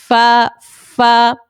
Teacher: اوپر کے دانتوں کے کنارے جب نچلے ہونٹ کے تر حصے سے لگے تو فا ادا ہوتا ہے. اوپر کے جو دانت ہیں اس کے کناروں پہ آپ جائیں، اوپر کے دانتوں کے جو کنارے ہیں اس پہ ہم جائیں گے.